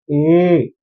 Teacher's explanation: इसमें आधा मुंह खुलता है, न कि पूरा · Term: अर्ध विवृत स्वर